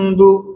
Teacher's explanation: Maknanya kan bunyi mi tu ada sikit tapi tak bunyi jelas, bunyi ikhfa. Kan contoh sini macam bu, bibir tu.